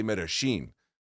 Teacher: The Argentines make it a sh sound.